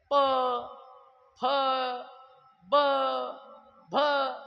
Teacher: प, फ, ब, भ हे ओष्ठ्य आहेत, ओठाला ओठ टेकतात.